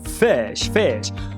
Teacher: O nome técnico dele é fricativa lábiodental desvozeada. Apelido é o f.